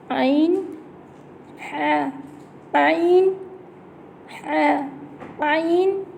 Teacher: आइन की आवाज़ हलक से निकलेगी, हलक के दरमियानी हिस्से से आवाज़ आएगी, जो हलक का सेंटर है। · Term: वस्त हलक